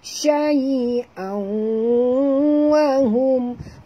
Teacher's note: tanwin bertemu dengan waw masuk dan dengung